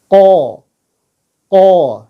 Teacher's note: dari pangkal lidah paling belakang